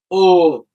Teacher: যখন ও উচ্চারণ করবা তখন জিহ্বাটা দুম করে পিছনে চলে যাচ্ছে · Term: পশ্চাৎ অবস্থানটা